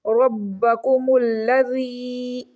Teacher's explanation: با کو مشدد ہونے کی وجہ سے پریس کر کے ریڈ کریں گے